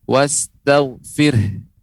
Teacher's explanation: karena ada huruf H maka kita berikan tambahan angin kita akan berikan huruf H diujungnya